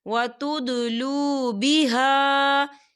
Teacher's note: اموالکم بینکم بالباطل وتدلوا بها، یا دیکھیں بہا، خال الف سے پہلے زبر ہے اور اس پر مد بھی ہے، تو ہم اسے 4 حرکت کے برابر کھینچ کے پڑھیں گے۔